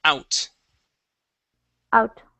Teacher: Here you had said ow, out. Okay, so it's an ow sound. Yes, the oo is there, but it's really quick.